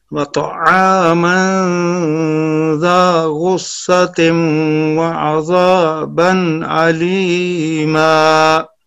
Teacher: غین میں ایک درجہ تفخیم اور صاد میں دو درجہ تفخیم